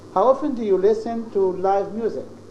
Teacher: Live music, you raise your voice, then you fall. You have a falling intonation.